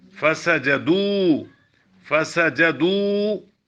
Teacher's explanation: دال کو کیوں لمبا کریں؟ دال پر پیش، واو ساکن، بڑی مد ہے، چھوٹی مد، بڑی مد.